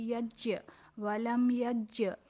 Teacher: جیم پر جزم ہے تو یہ حرف قلقلہ میں سے ہے اور تو جیم کو قلقلہ کریں گے